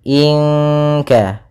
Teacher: Pada bacaan inka di sini ada ikhfa. Ya, nun mati bertemu dengan kaf yaitu ikhfa bagian yang paling belakang yaitu ikhfa ab'ad, dan kita menyamarkannya ke huruf kaf langsung.